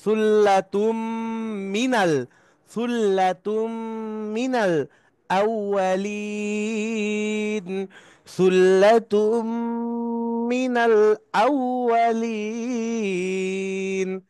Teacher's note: তা তানবিনের পরে মিম আসছে, ঈদগামে বা গুন্নার হরফ, গুন্নার সাথে মিলিয়ে পড়তে হবে।